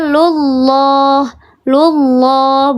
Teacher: Lafzul jalalah yang sebelumnya harakatnya dommah atau fathah maka dibaca tebal namanya lafzul jalalah taf khim